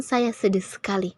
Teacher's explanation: Kita memberikan durasi yang lebih lama dalam kata sedih.